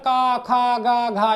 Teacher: ये सब का उच्चारण स्थान क्या हो जाता है कंठ